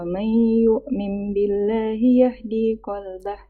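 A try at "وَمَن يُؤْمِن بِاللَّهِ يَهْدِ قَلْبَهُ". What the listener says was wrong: Yahdinya nggak panjang. Baca.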